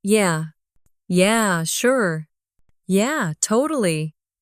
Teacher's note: Feel how your voice drops a little at the end. That's the relaxed American rhythm.